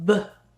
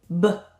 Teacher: 똑같은 입 모양인데 하나는 손끝에 진동이 없고 하나는 손끝에 진동이 있는 걸 말해요. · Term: 짝꿍 글자